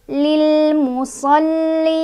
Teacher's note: Tadinya fathah jadi sukun karena berhenti. Cara bacanya panjang boleh 2, boleh 4, boleh 6